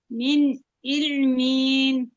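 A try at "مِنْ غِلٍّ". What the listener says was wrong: না, এটা আইন না আপু, ওটা গইন। গিল্লিন।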